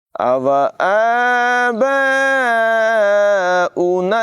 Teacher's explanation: याद रखें यहाँ पर हमज़ा को पढ़ा जाएगा, वाव को नहीं पढ़ा जाएगा। मद्दे मुत्तसिल को 2 अढ़ाई 3 अलिफ तक यानी तकरीबन 2-3 सेकंड तक लंबा करके पढ़ते हैं